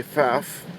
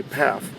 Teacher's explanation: in Germany they would pronounce the F with the P, so they would say Pfaff.